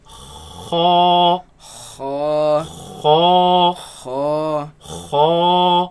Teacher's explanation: the root of the tongue raises against the uvula, and the commotion is what makes this sound. Now it should be a soft sound.